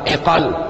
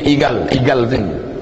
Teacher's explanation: Tali hitamnya itu bahasa Arabnya iqal, ain, qaf, alif, lam, iqal. Tapi karena orang Arab sana payah menyebut qaf, dia pakai g, igal. Dia bilang, saya mau beli igal, igal sini.